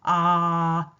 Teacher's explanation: 아 할 때는 혀가 아 내리는만큼 혀도 아래쪽으로 내려옵니다